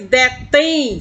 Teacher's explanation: detém soa mais forte a última sílaba. Por isso é oxítona, recebe um acento agudo.